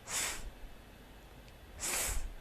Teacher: The tip of the tongue makes a light contact with the back of the lower teeth. The air is squeezed out between the mid part of the tongue and the upper teeth.